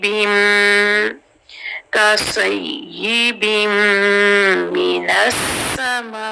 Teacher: بن کے بعد میم ہے تو بن سے بن جائے گا بم